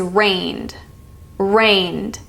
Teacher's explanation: that is the D sound because the root word ends in N when the root word ends an N it will be the